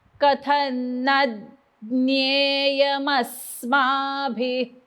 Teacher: न म्हणल्यानंतर मी जीभ दाताला लावणार आहे